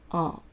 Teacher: L の時は舌を前、上の前歯の裏のあたりに必ずつけます